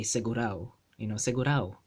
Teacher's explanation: Or sometimes people will just omit the A itself and just say segurao